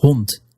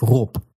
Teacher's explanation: 1, that if you see a voiced consonant at the end of a word, then you're going to devoice it. Giving you a T sound at the end of hond, and a P sound at the end of rob. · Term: devoicing